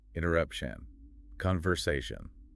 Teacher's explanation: It comes out sounding like an open, echoing vowel in the back of the nose. But in English, that suffix should sound like shan. It is flat and it's percussive. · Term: -ation suffix